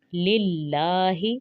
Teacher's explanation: الحمد، دو کو کھینچنا نہیں ہے کیونکہ پیش ہے، اور زبر زیر اور پیش کو کھینچتے نہیں ہیں۔ الحمد للہ، للہ کو باریک پڑھیں گے کیونکہ اس کا سٹارٹ زیر سے ہو رہا ہے